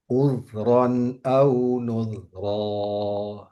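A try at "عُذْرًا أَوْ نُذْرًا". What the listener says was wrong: Ya, lebih bagus nudnya dari udnya. Udnya sedikit agak tebal. Oke, tipiskan bunyinya. Uz.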